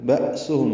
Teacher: حمزہ ساکن جھٹکے سے ادا ہوگا، ہم میں میم ساکن کے بعد با آنے کی وجہ سے اخفاء شفوی ہے.